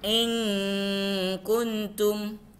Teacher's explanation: dibaca samar-samar atau dalam cara membacanya menggunakan eng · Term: ikhfa hakiki